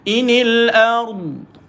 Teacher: maka dad bila matikan, ingat huruf dad ada satu sifat, nama dia sifat istitalah, memanjang.